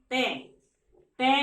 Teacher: हमारी जीवा कहां लगेगी, दांतों पर, दांतों से मिलेगी जाकर, तो वहां पर क्या होगा, दंत।